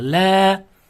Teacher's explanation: Alif so'zda kelib, o'zida hech qanday belgi bo'lmasdan, undan oldingi fathalik bo'lsa mattabi'i bo'ladi. Shunda bu yerda la deganimiz ikki harakat cho'zib o'qiladi.